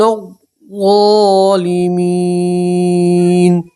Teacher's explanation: نون کو ظا سے ملائیں گے الف اور لام نہیں پڑھیں گے